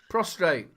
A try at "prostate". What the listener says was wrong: There's no R. Forget the R. Don't say prostrate. Say pros. Say pros. Go pros. Just split it into two. Say pros. Tate. No, Tate.